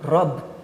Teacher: prononcer la consonne à la fin d'un mot avec la voyelle e